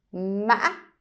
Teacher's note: So it is ma, ma. And the ending actually is very high pitch